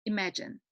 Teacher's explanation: So the stress is laid on the second syllable, imagine.